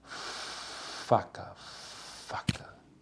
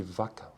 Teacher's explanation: Nada vibra aqui, ó, nas pregas vocais. Enquanto que vaca vibra, tem vibração.